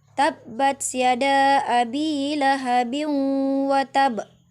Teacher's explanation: tanwin bertemu dengan wau dibaca berdengung disertai dengan dengung